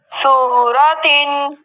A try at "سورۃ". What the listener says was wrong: صاد پر پڑھنا ہے سورہ